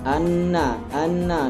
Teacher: Apabila ada nun dan mim bertasydid, maka ya dibacanya gunnah, yaitu ditahan. Anna ditahan selama 2 harokat.